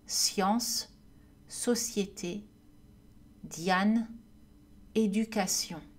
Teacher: le son y est comme un i prononcé rapidement donc combiné avec une voyelle suivante i se transforme en y · Donc, combiné avec une voyelle suivante, I se transforme en Y. Ensemble, le son Y plus l'autre voyelle forme une syllabe. Exemple avec I plus voyelle, science, société, Diane, éducation. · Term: semi-voyelle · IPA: [j]